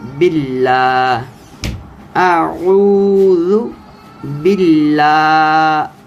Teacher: باللہ، باللہ، با کے نیچے چونکہ زیر ہے، آگے لام آ گیا ہے، تو لام کو آپ نے باریک پڑھنا ہے، موٹا نہیں پڑھنا ہے۔